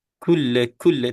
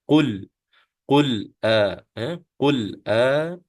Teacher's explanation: Qul dia dalam sikit kalau sebutan kita di belakang sikit Qul kalau Kaf itu di depan ya Qul ini lebih ke belakang jadi kalau kita kita matikan dengan lam kita pegang lam tu